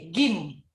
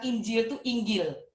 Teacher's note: Kalau Mesir baca jim itu jadi G, gim. Jadi orang Mesir bilang Injil itu Inggil.